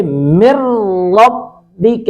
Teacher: من ربک، من نون ساکن کے بعد را، یہ بھی حروف ادغام میں سے ہے لیکن ادغام بلا غنہ، ناک میں آواز نہیں جائے گی، بلا غنہ ہوگا۔ من ربک، اس کو پڑھیں گے مر ربک، را کو پر کریں گے مر ربک، کاف کو باریک پڑھیں گے۔